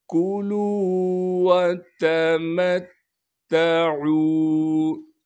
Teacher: تشدید آنے کی وجہ سے تا پر تھوڑا سا ٹھہراؤ رکھیں گے، عین کو صاف کر کے گلے سے ادا کریں گے · پھر میم کو ہم تا سے ملائیں گے جو کہ مشدد ہے، اس لیے میم کو اس تا سے ملا رہے ہیں۔ تشدید آنے کی وجہ سے تا پر تھوڑا سا ٹھہراؤ رکھیں گے · کاف کو باریک کر کے پڑھنا ہے اور کاف کو بالکل نہیں کھینچیں گے · واو مدہ کی وجہ سے لام کو ایک الف کے مقدار کھینچیں گے، اس واو کو بالکل نہیں کھینچنا ہے، تا کو بھی بغیر کھینچے پڑھیں گے۔